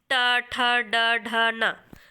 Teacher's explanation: ये जो ट वाला जो वर्ग होता है व हमारा मूर्धन्य में आता है